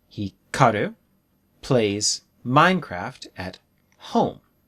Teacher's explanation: home is the strongest word